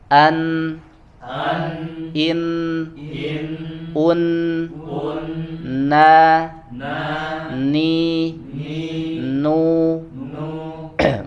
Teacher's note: huruf nun berada pada dua makhraj, yaitu ujung lidah ya, taraful lisan, dan rongga hidung atau al-khayshum